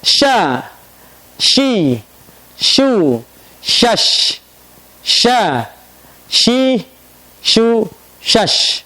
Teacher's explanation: Caranya bukan monyong. Kenapa? Karena huruf shin itu istifal. Sya, biasa mulutnya.